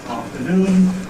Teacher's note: has a stressed syllable, the final syllable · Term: lexical stress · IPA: /ˌɑːftəˈnuːn/